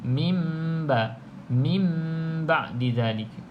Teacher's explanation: Kalau mim ekor ke bawah barulah bacaan iqlab, iaitu nun kita qallaba, kita tukarkan kepada huruf mim.